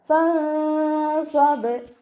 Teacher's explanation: നമ്മുടെ നൂൻ സാക്കിനയെ മറച്ച് വെച്ചിട്ട് മണിച്ചു കൊടുക്കുക